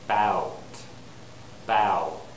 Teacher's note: my lips come together for the W